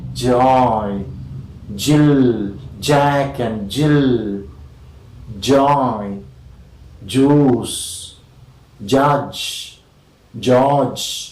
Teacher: Okay, in j, front of the tongue is against the hard palate